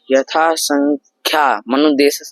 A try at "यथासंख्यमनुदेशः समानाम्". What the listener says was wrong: संख्या नहीं है, यथा संख्या है।